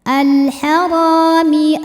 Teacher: Ra matobi'i dhahiri ya, karena ada alif didahului fathah, maka panjang ra-nya 2 harokat.